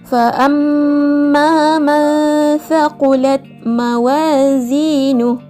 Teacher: menyembunyikan huruf nun mati atau tanwin dengan sifat antara idzhar dan idgham serta mengekalkan dengung pada kadar dua harakat